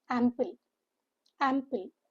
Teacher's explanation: Ample, the stress is on the first syllable.